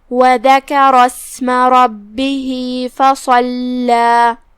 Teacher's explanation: لام پہ تشدید ہے 2 حرف کے برابر لام کو پڑھنا ہے